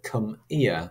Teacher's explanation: you have got the elision of the h phoneme in the initial position of that adverb